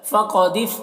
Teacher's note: قاف کو پر پڑھنا ہے، حروف مستعلیہ میں سے ہے